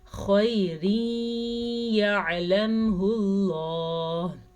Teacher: تنوین کے بعد یمون میں سے یا آ گیا ہے تو یہاں پہ ادغام بالغنہ کا قاعدہ ہو رہا ہے. غنہ کریں گے خیر یعلمہ اللہ.